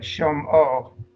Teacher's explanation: So we have a simple consonant vowel combination, which gives us an open syllable o.